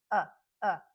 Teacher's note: full vowel sound that you find in stressed syllables where as the schah is found in unstressed syllables and it's much lighter and quicker than the short u